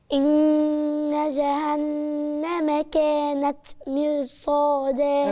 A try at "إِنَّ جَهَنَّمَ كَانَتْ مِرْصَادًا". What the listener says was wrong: الراء مش حلوة.